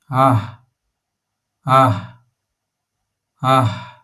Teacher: add a soft little breath at the very end. A gentle ah.